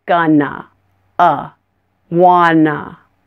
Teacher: The schwa sound is the sound you hear at the end of gonna and wanna.